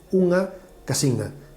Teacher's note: tiene una particularidad muy marcada, que lleva una vocal nasal que pronuncian en el interior de palabra en secuencias como unha casina.